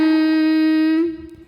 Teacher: su mad tabi'i zahiri sebab ada waw sukun sebelumnya berharokat dhammah. Cara bacanya dipanjangkan 2 harokat.